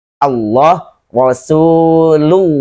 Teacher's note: Jadi ketika fathah dibacanya la, tetapi pada lafaz Allah ini huruf lam juga maka dibaca dengan tebal dan bunyinya lo.